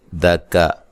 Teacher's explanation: دکا کاف کو باریک، دال کو باریک کرنا، لمبا نہیں کرنا